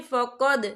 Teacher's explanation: यहाँ दाल साकिन है तो यहाँ पर कलकला होगा।